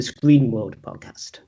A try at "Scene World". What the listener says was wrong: Scene World, not Screen. Scene, like movie scene or something.